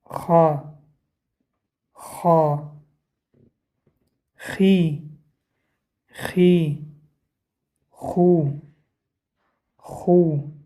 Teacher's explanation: Буква Х образуется в верхней части гортани. Буква Х является твердой буквой. Корень языка касается мягкой части неба.